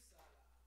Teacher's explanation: It maintains its emphasis on the U